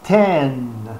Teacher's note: Mas há um N sutil de boca aberta ali